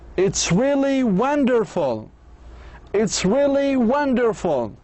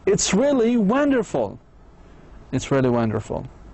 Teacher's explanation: When they are enthusiastic, excited or very happy, their voices go up.